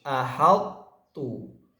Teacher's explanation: Pada kata ahattu di ayat Suratul Naml ayat 22 ini dibaca dengan idgham naqis, ahattu. Kita tetap membaca kata ahattu ini dengan mempraktekkan juga tidak meninggalkan sifat itbaq pada huruf to